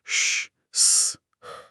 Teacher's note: इनके उच्चारण में मुंह से हवा थोड़ी रगड़ खाकर निकलती है, जिससे हल्की गर्मी या ऊष्मा पैदा होती है, इसीलिए ये नाम पड़ा। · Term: ऊष्म वर्ण